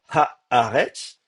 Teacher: le Aleph, qui est censé être un coup de glotte, à l'initiale, effectivement, on peut bloquer le passage de l'air pour la prononciation